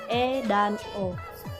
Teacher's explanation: vokal Madya atau Tengah yang dibentuk apabila rahang bawah menjauh sedikit dari rahang atas